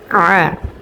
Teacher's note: আইনটা আমরা উচ্চারণ করব 2 নাম্বার মাখরাজ হতে, হলকের মধ্যখান হইতে স্পষ্টভাবে। যেমন আ, অনেকে এখানে পড়ে থাকেন আযাবান্নার, আযাবান যদি পড়ে তাহলে কিন্তু শুদ্ধ হবে না, আ।